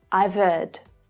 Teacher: the h of heard it often gets a little lost here it's like the MM sound from the end of I've links